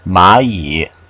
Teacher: Don't forget the tone change. This is really pronounced the second tone.